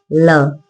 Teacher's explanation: ल जीभ का पहला आगे का हिस्सा जो है वह ऊपर की तरफ टच होता है। जबकि दोनों तरफ से हवा बाहर निकल जाती है। · हवा जीभ के दोनों तरफ से निकलकर मुंह से बाहर जाती है।